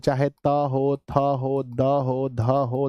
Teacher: यानी त जो है इसका दंत होता है।